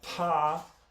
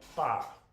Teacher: The apostrophe means that it is aspirated. So in Armenian, you've got aspirated consonants like pa and unaspirated ones that come out like ba